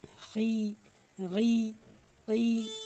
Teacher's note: جب خا اور غین اور قاف کے نیچے زیر ہو تو ہم لوگ اس کو باریک پڑھیں گے۔ اس کو مفخم نہیں حروف ہوا یہ، اس کو ہم لوگ باریک مرقق پڑھیں گے۔